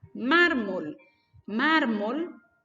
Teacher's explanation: mármol tiene la mayor fuerza de voz en la penúltima sílaba